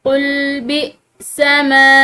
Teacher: हमजा के ऊपर सुकून की अलामत है तो यहाँ पर हमजा को झटके के साथ पढ़ेंगे